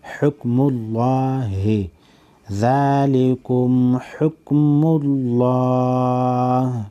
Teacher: لفظ اللہ سے پہلے پیش ہے، لفظ اللہ کو موٹا پڑھیں گے